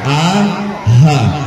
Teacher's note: Yang paling pangkal sini keluar 2 huruf. Namanya hamzah dan ha. Hampir ke dada dia.